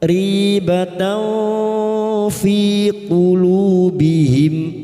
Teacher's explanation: Nun sukun atau tanwin yang bertemu dengan salah satu dari huruf 15 ini termasuk huruf fa. Kita samarkan bunyi fathah tanwin dan mendengung selama tiga harakat. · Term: ikfa hakiki